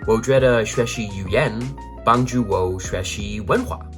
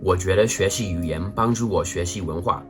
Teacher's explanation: the word for culture in chinese which is the second and fourth tone like a roller coaster